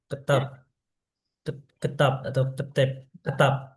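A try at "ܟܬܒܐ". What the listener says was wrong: ya, kesaf, kesaf ya, kesaf. tak dan ba, karena tak dan ba-nya soft ya, sama-sama soft. kesaf.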